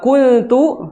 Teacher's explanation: Ikhfa. Dan ikhfanya di sini adalah ikhfa yang tarqiq, bukan yang tafkhim.